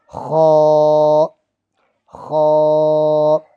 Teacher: اب یہ خا جو ہے اس کو تھوڑا سا موٹا پڑھتے ہیں، خا، یہ بھی حلق سے نکلتا ہے، تھوڑا سختی سے نکلتا ہے